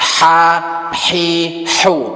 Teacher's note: Terus jangan ada getaran, jangan sampai ada juga orang nyebut makhrajnya jadi kha-hi. Jangan ada getaran kayak kho, tapi bersih dia. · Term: ha kecil